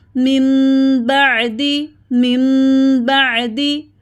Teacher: یہاں پر دیکھیے نون پر چھوٹی میم ہے، میم نون زیر میم، نون کی آواز کو میم میں بدل دیا، اقلاب کر لیا، میم. با یا زبر بئی، میم بئی.